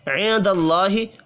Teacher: نون ساکن کے بعد دال ہے، یہاں پر بھی اخفاء حقیقی ہوگا، اللہ کا نام زبر کی وجہ سے پر پڑا جائے گا۔